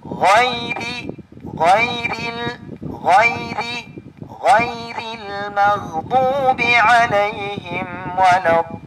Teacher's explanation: pag ang ra, ang kanyang vowel ay sa kasra, ay manipis siyang bigkasin. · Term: ra al-maksura